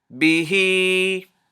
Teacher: this ha and its e, its kasra vowel, you have to extend it to two movements because of this ya saghira.